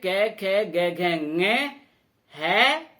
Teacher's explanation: कै, खे, गे, घे, ङे, है और विसर्ग, इनका उच्चारण स्थान कंठ से होता है।